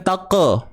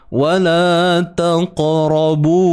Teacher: Wala taqra, bukan taqa. Ingat huruf qaf bersifat tebal, pangkal lidah naik tuan-tuan.